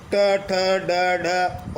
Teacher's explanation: इन व्यंजनों के उच्चारण में हमारी जीभ जो ऊपर वाले जबड़े का शीर्ष स्थान है, जिसे हम मूर्धा कहते हैं, उसे स्पर्श करती है और जीभ वापस झटके से बाहर आती है। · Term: उच्छित व्यंजन